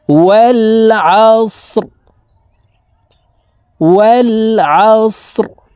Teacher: রকে ওয়াকফের ক্ষেত্রে সাকিন করে ফেলব